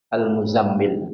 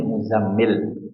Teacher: Ya dari akar kata tazammala yatazammalu tazammulan mutazammil. Ya, taknya dibuang atau melebur ke za jadi al-muzammil